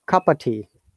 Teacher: we do not pronounce the of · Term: connected speech